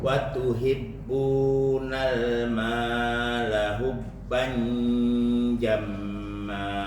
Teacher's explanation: Mau masuk ikhfa ke dalam jim, maka masuk ke pintunya jim.